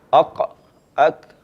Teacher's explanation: Bermula pada pangkal lidah ni, paling hujung iaitu huruf qaf. Ke depan sikit kaf.